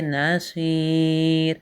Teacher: جب ہم یہاں پہ سٹاپ کریں گے تو اسے پڑھیں گے نصیر، را کو ساکن کر دیں گے